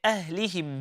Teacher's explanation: If we are reciting the light ha, it needs to be coming from the bottom of the throat. If it's heavy, from the middle of the throat.